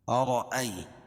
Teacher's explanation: ای یا ساکن سے پہلے حمزہ کے اوپر زبر ہے اس لیے یا لین ہوگا۔